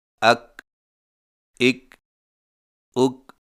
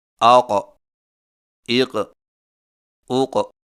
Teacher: کاف باریک آواز ادائیگی کے وقت زبان کی جڑ کو کوے کے قریب تالو پر لگائیں